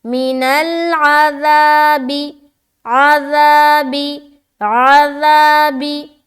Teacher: یہاں پر پھر نرمی کا خیال رکھنا ہے، نرمی سے نکالیں گے ذال کو، اور سیٹی کی طرح آواز نہیں آنی چاہیے.